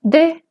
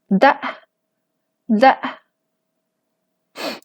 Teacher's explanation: no tiene laringización, es voz modal